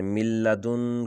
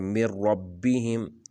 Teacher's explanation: اچھا، اسی طرح جو را ہے مر ربہم، یہ حروف آ جائیں تو یہاں پر نون کی آواز بالکل ختم ہو جاتی ہے اور یہ بغیر نون کے پڑھے جاتے ہیں، تو وہاں پر نون کو پڑھا ہی نہیں جاتا اور ادغام بغیر غنہ کے ہوگا۔ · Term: ادغام بلا غنہ